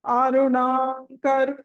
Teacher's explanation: అరుణం తర్వాత అది కంటిన్యూస్ గా పలికితే గనుక తర్వాత క ఉంది కాబట్టి పంచమా అక్షరం పలకాలి లేదు అంటే ఒక చిన్న పాస్ ఇచ్చి కూడా అనొచ్చు మనం కంటిన్యూస్ గా